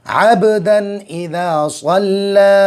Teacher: اب با میں قلقلہ ہوگا، جزم آیا ہوا ہے با پر